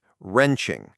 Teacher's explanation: notice the W is silent in wrenching. It's not wa-wrenching, it's just wrenching.